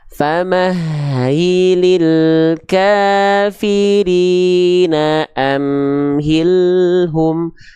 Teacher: L-nya terus jalan tanpa terputus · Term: lam sukun